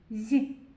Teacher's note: ми його чуємо м'яко зь. Тому це м'який приголосний.